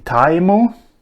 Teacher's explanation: words that have ended in sounds that are non-permissible at the end of Ngarla words, they have received the addition of u in the end